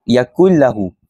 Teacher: Bila nun ini bertemu dengan huruf lam ataupun ra, ia perlu nun tersebut perlu dimasukkan ataupun diidghamkan ke lam tanpa dengung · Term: idgham bila gunnah